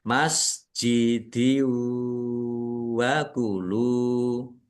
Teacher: Idgham bih idgham masuk bi dengan ghunah mendengung langsung masuk ke huruf wau dan mendengung. Biar tampak mendengung maka harus ditahan. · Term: idgham bi gunnah